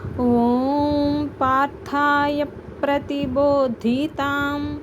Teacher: పార్థాయ అన్నాక రెండు లిప్స్ ని కలిపితే మీకు పి అనే సౌండ్ వచ్చేస్తుంది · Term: సంయుక్తాక్షరం